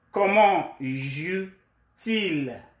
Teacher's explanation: The T is there so that we will link the verb and the pronoun smoothly